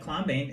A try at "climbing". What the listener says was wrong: No. It's silent B again. Look. When we have the B after the M, the B is silent.